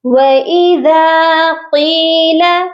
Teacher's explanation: ذال کے ساتھ الف مدہ ہے، اس کو ہم نے ایک الف کی مقدار لمبا کرنا ہے